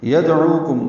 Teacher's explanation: گے. یدعوکم دال ساکن پہ قلقلہ ہے، عو واو مدہ ہے، عین وسط حلق سے ادا ہوگا اور یہ واو مدہ کو دو حرکات لمبا کریں گے. کاف